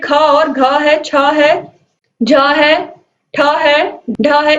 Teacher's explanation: इनका उच्चारण किस तरीके से होता है, महाप्राण के द्वारा, यानी कि इनमें हवा का आधिक्य होता है और इसीलिए इन्हें हम क्या कहते हैं, महाप्राण कहते हैं।